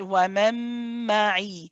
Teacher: idgham kamil, in this case, because it's a meme after it, it has a gunna. So this one you hold, okay?